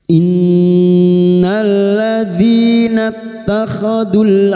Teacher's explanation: Nun yang bertasdid gunna musyadadah kita dengungkan selama tiga harakat